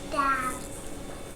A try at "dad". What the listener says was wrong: Oh, that's a D at the end. Dad. Dad, dad, dad.